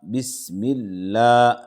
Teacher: لفظ اللہ سے پہلے زیر ہے، لفظ اللہ کے لام کو باریک پڑھیں گے